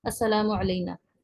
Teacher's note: یہاں پر جو غلطی ہوتی ہے، لوگ سب زیادہ تر غلطی یہ ہوتی ہے کہ سب اس طرح پڑھتے ہیں السلام علینا. ایک تو سلا کا جو الف مدہ ہے وہ غائب ہو جاتا ہے